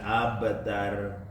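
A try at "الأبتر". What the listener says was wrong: Abtar itu roknya tipis Kalau roknya didahului oleh harokat yang fathah, rok sukun ya, abtar, ya kan? Maka roknya menjadi tebal. Kalau baca masih tipis.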